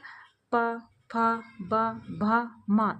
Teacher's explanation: आपको ऐसा लगेगा जैसे ओठ हमारे आपस में मिल रहे हैं। प तो ये हो गए ओष्ठ वर्ण।